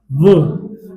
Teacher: जब आप व बोलोगे तब आपके जो दांत है वो होठों में टच करेंगे तब व की साउंड आएगी। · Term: दंतोष्ठ